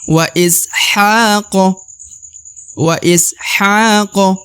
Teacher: huruf sa berharakat sukun maka dibaca WA is wa is Haq huruf ha dibaca Dua harakat karena di atasnya terdapat Alif kecil maka harus panjang dua harakat